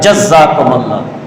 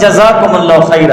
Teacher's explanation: زا پر تشدید نہیں لانا ہے، زا مشدد نہیں ہے، بس جزاکم اللہ خیر ہے۔